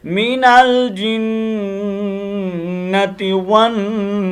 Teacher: اور والناس، واو کے اوپر ہونٹوں کو آپ کو پتہ ہے گول کرنا ہے، اور ناس کا غنہ لازمی کرنا ہے. نون کا غنہ پورا کرنے کے بعد پھر سین کو ادا کرنا ہے بریک کرتے ہوئے